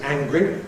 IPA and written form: ˈæŋgri (angry)